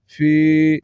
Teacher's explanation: کی اواز نکلے الا فا کو یا کے ساتھ ملائیں گے یا ساکن سے پہلے زیر ہے یا مد ہے ایک الف کے برابر کھینچ کر پڑھیں گے